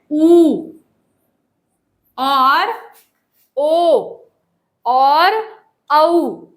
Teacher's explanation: तो आप देखिए कि 11 जो स्वर होते हैं उनमें से कौन सा उच्चारण ऐसा है जिनकी ध्वनि निकलते समय हमारे होठों का जो मुंह है, जो होठ है वो राउंड हो जाएंगे, गोल हो जाएंगे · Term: वृत्त आकार